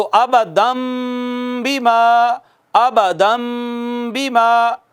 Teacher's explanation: تو یہ ابدن جو تھا ابدم ہو گیا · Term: इक़लाब